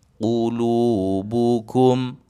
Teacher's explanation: Qulubukum huruf qaf baris dhammah ditebalkan. Lu dibaca 2 harakat.